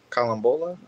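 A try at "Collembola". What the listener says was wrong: Colum- no A sound. No A. Should sound just like the name in French. Colombo.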